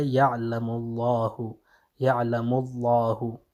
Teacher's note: لفظ جلالت کا جو لام ہے اس سے پہلے اگر ضمہ آ جائے تو اس وقت بھی کیا ہوگا جناب یہ لام تفخیم ہوگا